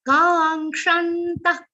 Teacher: ka is a long sound, and here we are not giving an aghat or stress of nga, because it consists of three letters, nga, ka, and sh.